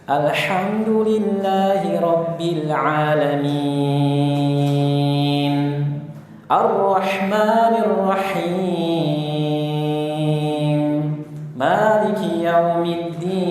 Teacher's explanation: sebagian imam memasukkan sebagian ke pangkal hidung ketika mad arid li sukun